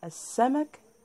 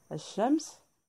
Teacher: إذن هذه كلها كلمات فيها الشمسية. لاحظوا كتابة ال ولكن لا تنطق.